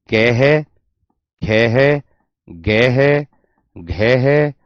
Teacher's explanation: तो मैंने कहा क्या इसकी परिभाषा, मैंने कहा क्या कि जिस व्यंजन ध्वनि का उच्चारण, जिस व्यंजन ध्वनि का उच्चारण या जिस व्यंजन का उच्चारण करने पर जीभ का पिछला हिस्सा, जीभ का पिछला हिस्सा, पिछला हिस्सा हमारे कंठ को छूता है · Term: कंठीय व्यंजन